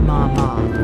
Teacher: Let's use the syllable ma as a simple yet effective example. The first tone is high and flat. · The first tone is high and flat ma ma, which means mother.